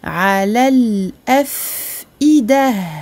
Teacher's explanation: le fa est important. Il faut lui donner son temps de rakhawah. On ne passe pas trop vite sur le fa sakin.